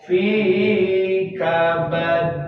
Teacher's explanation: qalqalah kubra yang ada di akhir, ditahan sedikit seperti fi kabad. Nah, ditahan.